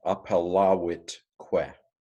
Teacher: V's are pronounced as W's in ancient Latin